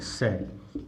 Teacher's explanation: इनका उच्चारण स्थान होता है दंत से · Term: दंत्य ध्वनि